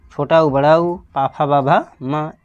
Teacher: छोटा ऊ, बड़ा ऊ, पा, फा, बा, भा, मा, इन सब का उच्चारण स्थान क्या भाई? ओष्ठ है।